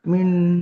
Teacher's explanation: kalau nun sukun bertemu dengan nun itu bi gunnah dengan mendengung. Ya, min Dengung nun ditandai nunnya ada tasdidnya.